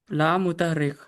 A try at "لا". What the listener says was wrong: ला अलिफ मत होता, अलिफ से पहले जबर आया ना।